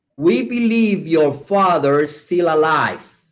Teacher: Porque la R de father se une a la I de is. Entonces digo fathery, pero con acento inglés. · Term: linking words